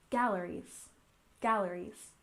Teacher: You remember that galleries has a stress on the first syllable